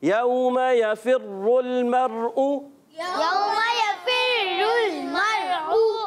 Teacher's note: रा पर पेश है इसलिए हमने पुर पढ़ना है और लाम को हिलाना नहीं है, और यहाँ रा साकिन से पहले ज़बर आने की वजह से ये रा पुर हो जाएगी और हमज़ा को खूब वाज़े करेंगे।